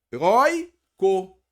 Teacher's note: É uma paroxítona. Não é a última mais forte, é a penúltima. E quando for uma paroxítona com ditongo oi e ei, não são mais acentuadas.